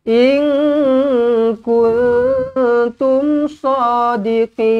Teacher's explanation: Wa hadzal wa'du in kuntum. nun kosong bertemu kaf, nun kosong bertemu ta, kedua-duanya ikhfa hakiki, dengungkan dengan dua harakat.